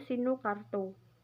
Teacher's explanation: Pada kata sinukarta mempunyai tulisan fonetik sinukarto. Cara baca vokal A kedua sama dengan tulisan fonetiknya, yaitu dibaca O.